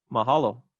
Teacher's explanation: the wa attracts maybe we can call it secondary stress